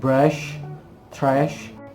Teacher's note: udara dipaksa melalui lidah dan mengarah tepat di luar alveolar ridge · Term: post alveolar